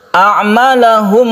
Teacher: A'malahum ada hamzah kemudian bertemu dengan sukun ain. Yang keduanya ini berbeda cara membacanya tapi makhrajnya itu sama, yaitu di tenggorokan. Jadi tolong dibedakan, ini a kemudian sukun ain.